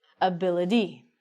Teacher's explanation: we actually say the t like a d